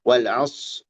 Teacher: jangan jadi sin dia huruf yang tebal ya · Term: sukun shad